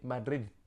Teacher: c'est un TH anglais plus impulsif